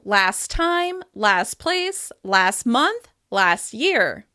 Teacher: we often drop the T at the end of last when it's followed by another word.